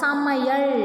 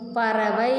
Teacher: ஐகாரம் சொல்லின் இடையிலும் இறுதியிலும் வரும்பொழுது ஒரு மாத்திரை அளவில் ஒலிக்கும். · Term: ஐகார குறுக்கம்